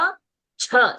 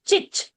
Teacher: When च becomes expelled out च। Same च when you expel out with more air it becomes छ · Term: छ महाप्राण